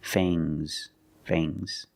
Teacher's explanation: the S is making a zebra sound Z but it's soft